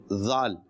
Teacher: زال زبان کے سرے اور اوپر کے دانتوں کے اندرونی کنارے سے ادا ہوتا ہے